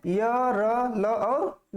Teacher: श्वास का अवरोध बहुत कम होता है, हवा अबाध गति से बाहर निकलती है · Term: अंतस्थ व्यंजन